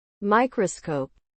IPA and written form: ˈmaɪkrəskoʊp (Microscope)